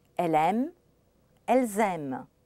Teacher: you hear the m in both cases but you also hear the Z the liazon on the plural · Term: liaison